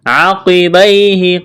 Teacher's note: یا لین ہے، اس کو کھینچنا نہیں ہے